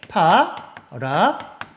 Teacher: 히읗과 디귿이 만나면 티읒이 되네요